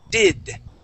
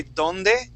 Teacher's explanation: when we say that D, our tongue does not touch our teeth. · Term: English D